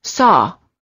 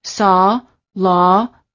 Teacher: the lips are apart and very slightly rounded and they're oval in shape and the tongue is slightly tense and it's down near the floor of the mouth